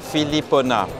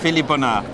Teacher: with the tone on the last syllable in French